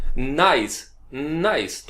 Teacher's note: जुबान भी मिलेगी ऊपर और नाक में से भी निकलेगी। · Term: नून गुन्ना